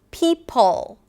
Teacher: that's the schwa sound before the dark L. It's affected by the L